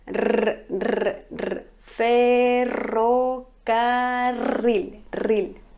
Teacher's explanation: Ce mot peut être un peu compliqué pour vous les francophones parce que vous n'avez pas ce son r, r. Mais c'est un R roulé. Vous devez mettre votre langue sur le palais et le rouler comme son nom l'indique.